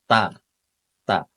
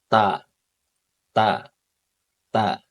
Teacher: Ta berharokat fathah maka juga dibaca ta teman-teman ya, dibaca ta. Makhrajnya ujung lidah ya, ujung lidah ditempelkan ke tempat pertama tumbuhnya gigi seri atas ya. Jadi ini gigi seri ya, gigi seri kita antara gusi dan gigi seri di tengah-tengahnya ini teman-teman ya, tempat pertama tumbuh gigi seri atas ya.